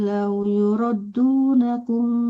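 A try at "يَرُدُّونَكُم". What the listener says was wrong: Kebalik bukan yurat tapi yarut.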